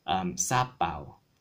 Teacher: So that ah, that second ah gets the stress